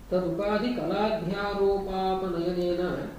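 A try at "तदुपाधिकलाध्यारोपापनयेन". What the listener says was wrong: Not nayanena, nayena. Apanayena.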